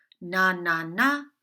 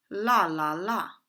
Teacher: n is a nasal sound therefore when you cover your nose you can't generate the sound